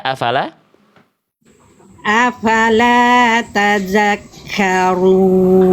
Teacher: Ronya tebalkan. R domah itu harus tebal. Angkat pangkal lidah.